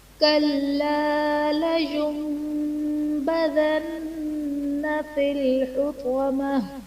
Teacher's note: لینبذن میں نون ساکن کے بعد حرف با ہے، یہاں پر نون ساکن کو ہم میم سے بدل کر اخفا کریں گے، یعنی غنہ کر کے پڑھیں گے۔ نون مشدد ہے تو نون مشدد میں غنہ ہوگا۔